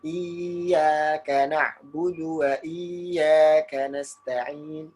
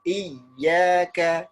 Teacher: Tapi ya-nya ya tasydid musyaddad. Kalau tasydid ditekan ya, ditekan. Tekan ya-nya, bukan dipanjangkan.